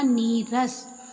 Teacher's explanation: यदि विसर्ग के बाद रा हो तो विसर्ग लुप्त हो जाता है और विसर्ग का पूर्व स्वर दीर्घ हो जाता है। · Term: विसर्ग का लोप